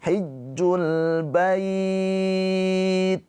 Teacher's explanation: Mad lin itu panjangnya sama seperti mad arid lukun. Boleh dibaca panjang dua, empat atau enam harakat dengan syarat berhenti. Tapi kalau lanjut jangan dibaca panjang, hanya dilembutkan aja.